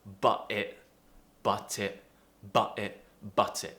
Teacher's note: we have to pronounce that t or we drop it with a glottal sound · So you can say both with a glottal T between but and it, or you can just say but it.